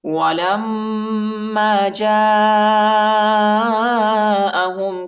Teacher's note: وَلَمَّا جَاءَهُمْ كِتَابٌ مِّنْ عِندِ اللَّهِ وَلَمَّا جَاءَهُمْ، لام کو میم کے ساتھ ملائیں گے اور میم پر غنہ کریں گے۔ میم پر شد آیا ہے، میم کو شدت کے ساتھ سختی کے ساتھ پڑھیں گے